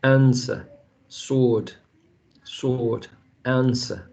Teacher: This W right there is not pronounced.